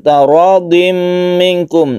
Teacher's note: Idgham artinya masuk ke huruf mim, artinya tanwin ini melebur menjadi tasydid mim dan didengungkan bi gunnah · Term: idgham bi gunnah